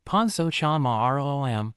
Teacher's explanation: Think of ro like rude but shorter, then let your voice drop on am. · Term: falling